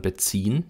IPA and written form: bəˈt͡siːn (beziehen)